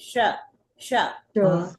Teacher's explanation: जब श बोलेंगे ना तो थोड़ी इसमें शीटी की आवाज आएगी। श श बोलेंगे ऊपर जाएगी, दांत से चिपकेगा, है ना।